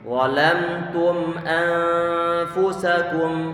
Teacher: untuk bacaan ikhfa, kita berikan sifat gunnah pada huruf nun, kita tahan di sana.